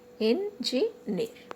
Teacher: So the last syllable is near. So that's why we are marking stress on near.